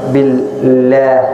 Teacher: إذا كان قبل كسرة فلفظ الجلالة ترقيق